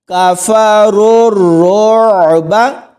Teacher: را کو آگے را کے ساتھ ملائیں گے اور اس را کو عین کے ساتھ ملائیں گے اور عین کی آواز حلق سے نکلے گی